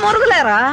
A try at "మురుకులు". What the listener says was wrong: మురుగులు కాదమ్మా, మురుకులు.